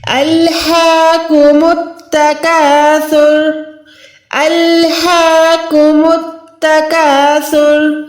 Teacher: ہاں کو ہم نے 1 سیکنڈ کھینچ کے پڑھنا ہے، یہ ہا نہیں ہے، ہا زبر ہا نہیں ہے، ٹھیک ہے، کھڑی زبر ہے، یعنی یہاں پر ہم نے ہاں کو لمبا کرنا ہے۔